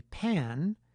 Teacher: If the tongue tip rises, the result will be “pan”